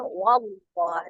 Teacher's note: lafaz Allah dibaca dengan tebal ya, wallah, dengan tidak merubah huruf lam menjadi bunyi huruf waw